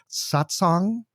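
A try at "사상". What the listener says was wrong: It doesn't have a T in it. That's sort of a meditation group in Buddhism, a satsang. This is sasang with no T.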